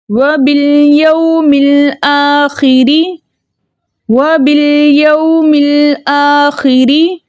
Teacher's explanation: ہم یہ با کو لام کے ساتھ ملا کے پڑھیں گے اور لام کو اس کے مخرج میں روک کے پڑھیں گے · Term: لام قمریہ